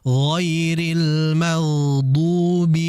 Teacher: Dan juga jangan sampai dod ini dibaca ada desisan almagdu. Karena dod ini jahr enggak ada desisan udara yang keluar.